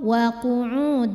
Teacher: ada tanwin fathah yang menghadapi huruf di depannya yaitu huruf wau maka tanwinnya dimasukkan ke wau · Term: idgham bunah